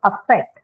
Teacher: So affect begins with a schwa sound.